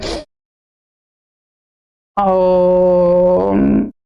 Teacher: प्लुत स्वर में 3 मात्रा का समय लगता है।